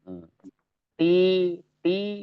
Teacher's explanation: Ti tipis karena sifatnya istifal Ti secara itunya istifal jadi dia eh makhrajnya satu makhraj dengan